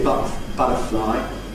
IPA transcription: ˈbʌtəflɑɪ